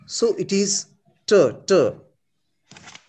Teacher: English ta, the tongue tip touches the alveolar region.